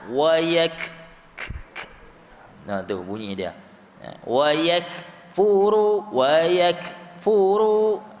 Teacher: Makhraj dia di pangkal lidah, tapi bukan hujung sekali, sebelum sedikit daripada huruf qaf. Bukan hujung sekali huruf qaf. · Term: huruf kaf